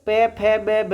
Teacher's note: उ पे वर्ग और उपपदमानीय वर्ण, इनका उच्चारण स्थान क्या होता है? ओष्ठ होता है।